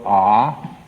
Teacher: the a is pronounced at the back of the throat ah and then you bring it forward ooh and then closes